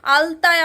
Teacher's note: আমার জিভ এসে ঠেকছে কোথায়, ঠিক দাঁতে